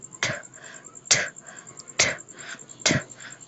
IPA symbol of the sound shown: t